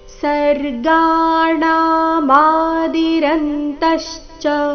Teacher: ಗಾ ಣ ಮ ಮೂರು ಅಕ್ಷರಗಳು ದೀರ್ಘ ಬರಬೇಕು.